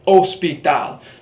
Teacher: The H in Spanish, H, is always silent.